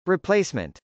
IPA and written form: rɪplˈeɪsmənt (replacement)